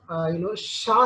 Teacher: It is voiceless, and place is palato-alveolar. Manner is fricative. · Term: sha sound